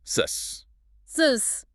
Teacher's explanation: The vibration just stops. It stops completely. The air is moving, but the engine is off. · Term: unvoiced sound